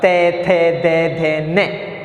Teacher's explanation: तो जीभ का अग्रभाग कहाँ स्पर्श करेगा? दांतों के स्पर्श करेगा